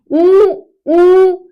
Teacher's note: स्वरों का उच्चारण करते समय ओष्ठ की आकृति पूरी तरह से अगर गोल हो जाती है तो उसे क्या कहा जाता है? वृत्त मुखी स्वर कहा जाता है। यह जो स्वर होते हैं वृत्त मुखी यानी कि हमारे जो होठ है वो वृत्त के आकार के बने।